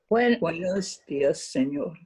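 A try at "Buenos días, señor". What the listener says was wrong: Okay, good.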